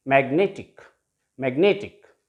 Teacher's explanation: So this is the last syllable ending in ic. So it will have the stress on the penultimate syllable